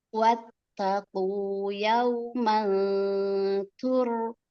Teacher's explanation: Tak-nya tipis, ro-nya yang tebal.